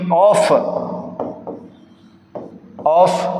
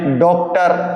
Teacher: ये जो ध्वनि है ये आ और ओ के बीच की ध्वनि है दोस्तों। अ और ओ के बीच की ध्वनि है। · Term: अंग्रेजी स्वर